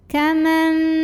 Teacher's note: Jadi yang tadinya kaman jadi kamam, jadi m disertai dengungan. Nah, jadi kita menahan bunyi m-nya. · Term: iqlab